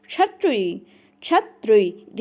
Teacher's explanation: कंठ और मूर्धन्य मिलाकर बोलना है